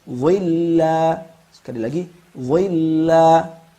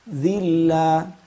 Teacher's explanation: Kalau kita hilangkan idbaqnya, maka seperti huruf zal